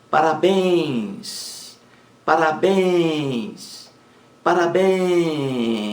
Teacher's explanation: a sílaba mais forte a última logo parabéns é uma palavra oxítona